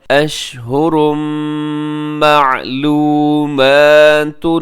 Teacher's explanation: الحج، آگے اشہرم، اشہرن پہ تنوین ہے اور تنوین کے بعد میم یرملون کا یہاں ادغام کیجیے گا